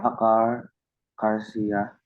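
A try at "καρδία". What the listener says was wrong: This is not, this is a delta. Kar. So it's a delta. Remember cardiac arrest?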